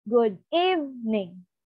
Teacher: from normal tone which is two it will rise and then it will suddenly drop down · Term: drop or shift